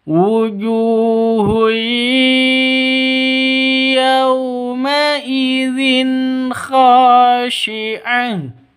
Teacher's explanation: ju panjangnya dua ketukan karena wau sukun didahului oleh dammah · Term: Mad Asli